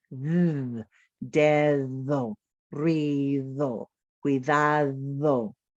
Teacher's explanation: Although I had 2 D's in there, the first D made a different sound, d, de, than the second D. The second D was actually the English digraph TH sound voiced.